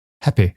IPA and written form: hæpɪ (happy)